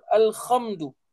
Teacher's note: orang sebut al-khamdu kerana mungkin nak menekankan ha itu ha pedas sehinggakan disebut al-khamdu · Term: makhraj